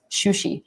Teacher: and she would say Sushi as shushi both sh sounds because the o sound makes you round your lips and you end up doing something more like shushi